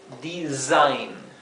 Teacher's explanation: tenemos una S simple entre dos vocales y se pronuncia z, como una S vibrante